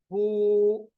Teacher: अब देखिए, आप पढ़ते देखिए, बू। जो ही आपने बू पढ़ा, आप देखिए कोई भी हिस्सा नहीं मिलता, बल्कि खाली हिस्सा है जो हमारे गले से लेके हमारे मुंह तक जाता है, खाली हिस्सा, जिसको अल जाउफ कहते हैं, जहां से आवाज निकलती है। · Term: वाव मद्दा